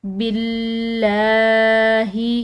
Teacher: لفظ اللہ کی لام یہاں باریک پڑی جائے گی کیونکہ پیچھے والے حرف یعنی کہ باقی زیر ہے، باللہ، والیوم